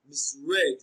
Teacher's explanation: Misread is pronounced as misread. Read is pronounced louder and longer. Read receives what? The stress.